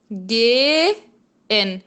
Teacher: Esse H do gehen está alongando o E anterior.